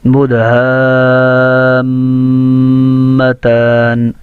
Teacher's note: اب یہ ہا کا جو الف ہے نا اس کے اوپر مد متصل ہے. اور ہا کو میم سے ملا کر مد کرتے ہوئے میم میں غنہ بھی کرنا ہے